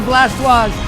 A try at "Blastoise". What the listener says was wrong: You just pronounced Blastoise with a French accent.